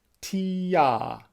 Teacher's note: Ah, my tongue dropped as I went from E to A. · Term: tongue voicing